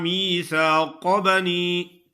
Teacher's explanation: قاف کو خوب موٹا کرنا ہے، میثاق بنی باریک کاف کی طرح نہیں پڑھنا